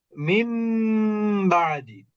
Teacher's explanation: ওখানে ইকলাব হয়ে যাবে, নুনটা মিম হয়ে যাবে।